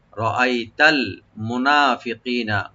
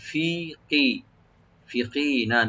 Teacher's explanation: মুনা নুনটাকে open করে এক আলিফ টানবেন